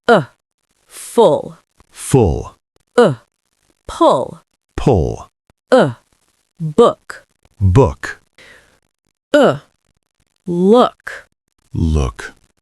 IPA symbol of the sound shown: ʊ